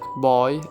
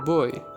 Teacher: It’s O’, in-between O and U, the lovechild.